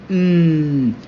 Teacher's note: a sound which is made with the lips, bilabial, is said with the air escaping from the nose, nasal, and is said with voice, voiced